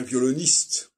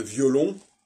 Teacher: Donc, dans violoniste, le N réapparaît. Dans violon, il est éclipsé.